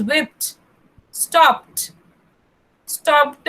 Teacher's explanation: These end with D, but the actual sound comes with T.